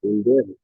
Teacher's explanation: Der tiene la mayor fuerza de voz. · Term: sílaba tónica